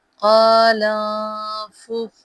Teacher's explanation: لام کو نون کے ساتھ ملائیں گے